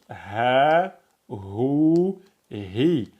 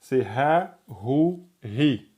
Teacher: Et quand vous dites ha pareil, le son vient de là en dessous la glotte et il passe hou. La langue elle a pas de contact. La glotte elle n'a pas de contact.